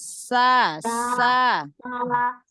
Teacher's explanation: Tambahkan lagi sofir pada sa-nya, pada sinnya